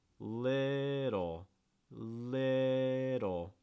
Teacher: Okay, this is the case especially of like a fast D sound where you don't need to make contact with the top of your mouth. Just need to raise and lower your tongue very quickly.